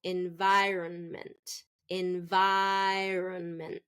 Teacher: native speakers are going to reduce the middle syllable so environment environment see run is really reduced instead of Ron